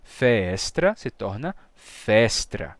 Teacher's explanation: a gente vai ter uma crase, dois S lado a lado, se juntam num só. Então, feestra se torna festra.